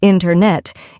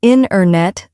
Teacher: Instead, we say internet. The t sound gets softer or disappears. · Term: dropped sounds